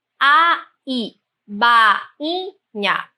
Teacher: Na palavra bainha, então, nós temos um hiato e as duas vogais não podem ficar na mesma sílaba.